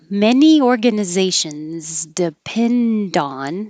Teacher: add them so many organizations depend on there's a connection there the d will connect with the o